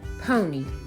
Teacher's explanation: syllable is open and ends with a long vowel sound o the second syllable is open and ends with a long e sound and we use the Y to make the e sound just · the first syllable is open and ends with a long vowel sound o the second syllable is open and ends with a long e